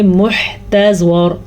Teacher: زواد پر پڑھیں گے کیونکہ زواد حروف مستعلیہ میں سے ہے، اور را کو بھی پر پڑھیں گے کیونکہ را ساکن کریں گے تو اس سے پہلے حرف پہ زبر ہے، اس لیے ہم را کو پر پڑھیں گے.